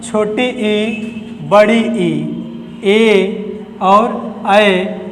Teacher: ऐसे स्वर जो जीभ के आगे के हिस्से से बोले जाएं अग्र स्वर